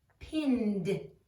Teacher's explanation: it sounds like a D because it's voiced